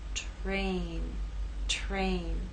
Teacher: R begins voiceless and takes on a voice sound